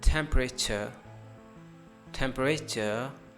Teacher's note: Here we have stress over the first part of the temp, temp. And the next one is, the rest of all wording is silent syllable.